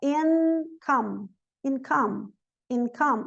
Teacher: A gente não nasaliza.